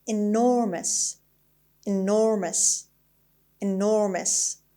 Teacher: the stress is on the second syllable, is on N, and since the word ends in OUS, it is definitely an adjective.